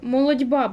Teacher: В молодьба у нас буде м'який звук дь, тому що т глухий звук і він переходить в д дзвінкий під впливом наступного дзвінкого б